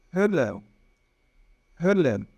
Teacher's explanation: Na verdade, entre o O e o E, Então, como que a gente vai reproduzir esse som? A gente faz a boca do O bem redondinha e tenta falar o E. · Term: umlaut